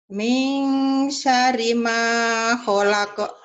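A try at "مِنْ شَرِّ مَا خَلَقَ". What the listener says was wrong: Bagus. Nyambernya kurang ya. Kurang nyamber.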